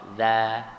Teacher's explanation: Kalau huruf zal dia infitah, dia buka za gitu.